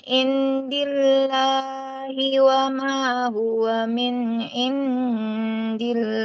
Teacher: lafaz Allah itu apabila huruf sebelumnya kasrah dia tipis lamnya